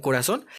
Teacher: en corazón la sílaba tónica está en la última sílaba